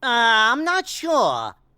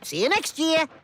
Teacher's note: if the ra appears at the end of a word, followed by the word boundary, he replaces it with a schwa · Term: non-rhotic speech